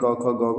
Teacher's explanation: क ख ग हमारी कंठ ध्वनि होती है